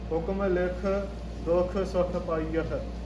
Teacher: ਇੱਥੇ ਹੁਕਮ ਲਿਖ, ਲਿਖ ਤੋਂ ਬਾਅਦ ਠਮਕੀ ਆਉਗੀ, ਥੋੜਾ ਜਿਹਾ ਪਾਜ਼